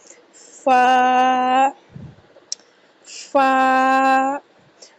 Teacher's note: فا اوپر کے دانتوں کا کنارہ اور نیچے والے ہونٹ کے تار حصے سے ادا ہوگا۔ فا کا مخرج اوپر کے دانتوں کا کنارہ اور نیچے والے ہونٹ کے تار حصے سے۔